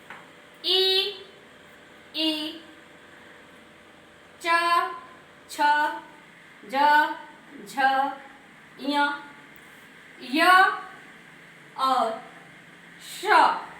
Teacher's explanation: इनको बोलने में हमारी जिह्वा तालु से टकराई है, इसलिए इनका उच्चारण स्थान तालु हुआ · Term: तालव्य वर्ण